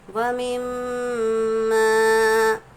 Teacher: وَمِمَّا، میم پر تشدید ہے، میم مشدد غنے کے ساتھ ادا ہوگا، اور ماں میں الف مدہ ہے، خالی الف سے پہلے جب بھی زبر ہو الف مدہ ہوگا، الف مدہ کو ایک الف کے برابر کھینچ کر پڑھیں گے